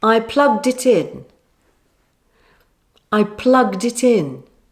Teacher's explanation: Can you hear the d sound now? It's no longer a t, is it?